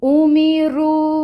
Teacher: مد منفصل کتنی کھینچنی ہے؟ 4 to 5 کاؤنٹس